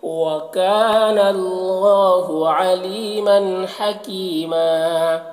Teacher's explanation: مدہ ہے، ایک الف کے برابر کھینچیں گے اور یہاں پر وقف کریں گے تو ایک زبر کے ساتھ الف پڑھیں گے